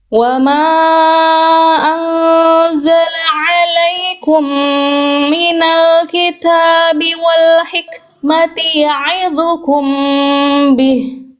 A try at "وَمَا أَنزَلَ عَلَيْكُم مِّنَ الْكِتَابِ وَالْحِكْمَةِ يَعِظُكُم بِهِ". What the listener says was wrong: Sip, sekarang tinggal kasih tebal vo-nya Bunda. Yang vo sekarang kurang tebal. Angkat pangkal lidahnya. Minal kitabi wal hikmati ya'idhukum bih. Coba dari minal kitab saja Bunda.